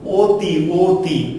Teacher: অ এর যে ধ্বনি রূপ, সেই ধ্বনি রূপটা অনেক সময় কি বা কোনো কোনো সময় ও এর মতো হয়